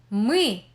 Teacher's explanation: If you managed to read them, you will manage the last block too. Ui is a vowel somewhat resembling the English e in zip, but with a more central position of the tongue